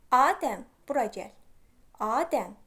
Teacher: xitab var vurğu düşəcək ilk hecanın üzərinə